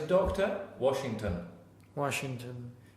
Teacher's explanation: so the last syllable will normally be Schwa.